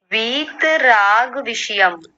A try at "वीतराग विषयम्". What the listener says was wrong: राग में ग को आधा कर दिया आपने, ठीक कीजिए स्वयं से। विषयम नहीं विषयम।